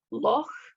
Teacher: We also have 2 additional consonant sounds, not in RP English, the ch sound, the velar fricative, like in loch